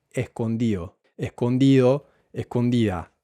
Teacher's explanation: Y esta D se pierde. Y es muy típico en Chile que la D se pierda cuando se encuentra entre vocales, sobre todo en participios